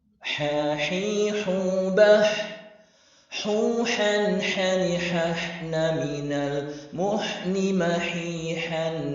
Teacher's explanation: Terasa huruf H lebih tajam karena memang jalur suara dan nafas menyempit. · Huruf H di makhraj yang sama sedikit berbeda dari segi tekanan epiglotis. Katup epiglotis tetap terasa mengarah ke dinding tenggorokan. Akan tetapi masih ada renggang untuk hembusan nafas yang keluar di antaranya.